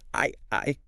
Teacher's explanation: it's short. It's quite relaxed. Your mouth is just slightly open.